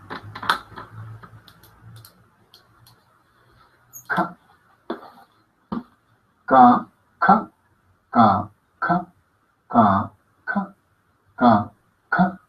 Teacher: Es decir, es soplada, oclusiva, K, sorda.